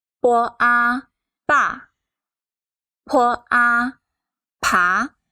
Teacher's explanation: We pronounce the initial po lightly and quickly move on to the final a. And the final should be pronounced fully and loudly.